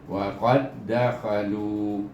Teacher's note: Jadi baca qaf ini diidghamkan dengan dal yang kedua. Iaitu dal yang pertama tidak bunyi. Jadi bunyinya wa qad dakhalu.